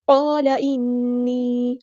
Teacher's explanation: ہے، فَأَتَمَّهُنَّ، قال انی، الف مد آیا تو مد اصلی ہوگی، قاف ہمارا ہیوی ٹر پر ادا کریں گے، یہاں پہ الف بھی ہمارا ہیوی ٹر بن جائے گا ، لام کے زبر کو لمبا نہیں کرنا، قال نہیں پڑھنا،